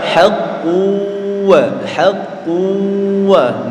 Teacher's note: jangan lupa melebur disertai mendengung ya